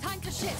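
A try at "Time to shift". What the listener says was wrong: Why couldn't I hear, like, the pronunciation of the F in that word, bro? It literally just sounded like you said it's time to shit.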